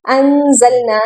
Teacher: शद है और जोर से हमें मिलाना है अनजलना यहां पर नून पर गुना करना है क्योंकि नून साकिन है और उसके बाद जा आ रहा है जा हरूफ हल्की में से नहीं है तो इसलिए हम यहां